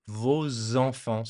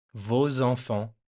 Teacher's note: The S from vos makes the little connection with the first vowel, vos enfants. So it sounds like there's a Z there.